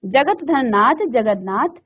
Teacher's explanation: इसी तरह से त का न हो जाता है तो त के बाद न आया है तो आधा न बदल गया।